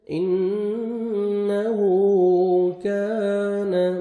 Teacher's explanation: نون مشدد ہے، غنہ کریں گے، نوز میں ساؤنڈ لے کے جائیں گے، الٹا پیش ہے، واو مدہ کا قائم مقام ہے، 1 سیکنڈ آپ نے ہا کو کھینچنا ہے. انہو کان، کاف کو باریک پڑھیں گے اور الف مدہ 1 سیکنڈ کاف کو کھینچنا ہے